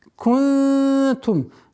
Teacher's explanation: ихфа в размере двух огласовок. Вот она, удержание назализации.